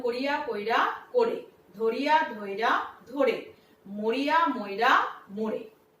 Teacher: হ্রস্বইটা হয়ে যাবে এ আর হ্রস্বটা হয়ে যাবে ও। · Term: অভিশ্রুতি